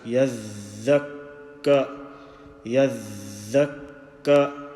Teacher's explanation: We can't say yadh and then take a breath or just break the sound, pause for even a split second. The sound continues in the breath.